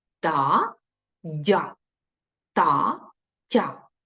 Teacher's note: пом'якшення приголосних перед я